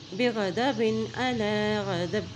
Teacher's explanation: با ساکن ہو جائے گا، اس کی حرکت ادا نہیں کریں گے لیکن با کی ساؤنڈ آئے گی